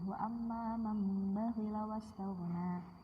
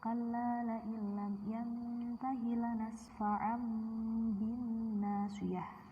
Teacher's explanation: maka nun mati atau tanwin dirubah pengucapannya pada huruf mim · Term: iqlab